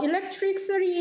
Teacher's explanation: electricity 할 때 마지막에 그 T 사운드는 또 역시 플랩으로 나타나요. 이 경우에는 두 개 다 스트레스를 받지 않는 모음 사이에 옵니다.